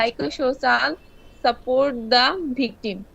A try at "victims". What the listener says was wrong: শেষে এস গুলো কিন্তু উচ্চারণ হচ্ছে না, এগুলো করতে হবে, শেষে এস আছে, victims, ওকে